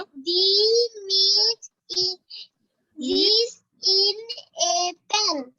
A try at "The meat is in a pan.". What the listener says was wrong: And very good.